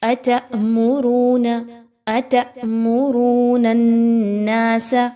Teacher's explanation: نون کو نون کے ساتھ ملائیے، نون مشدد کا غنہ کیجئے، را جو ہے اس کو پر پڑھا جائے گا، را کے اوپر پیش ہے۔